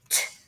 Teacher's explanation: You don't use your voice box to say the t sound